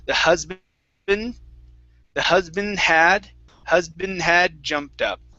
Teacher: i'm actually going to combine the n and the d sound